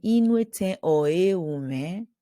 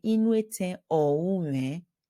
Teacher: Because of the rule of contraction, so vowel elision, when two words, like here at the end of oe, there is a vowel, and u is a vowel, they clash. So the a, right, at the end of oe has to drop.